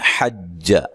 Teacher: حا کو جیم سے سختی سے ملانا ہے اور جیم کو لمبا نہیں کرنا